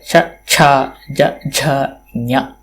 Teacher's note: ತತ್ರ ತಾಲು ಸ್ಥಾನಂ ಸ್ಪರ್ಶವ್ಯ ಸ್ಪರ್ಶನೀಯಂ